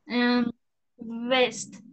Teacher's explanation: me gustó que metiste vibración en la ve